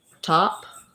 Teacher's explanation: the T sound needs to have that burst of air coming out